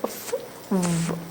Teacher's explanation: Dental means tooth. F, the upper teeth is touching the lower lip. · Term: labiodental